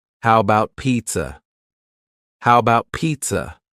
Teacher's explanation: the first a in the word about is gone it's just missing